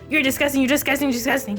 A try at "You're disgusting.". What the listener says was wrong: You said it too fast. It didn't sound like you actually said it. So you gotta say it, but then you gotta pronunciate it like real well.